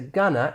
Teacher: So for example, going to, we can reduce that to gonna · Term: reductions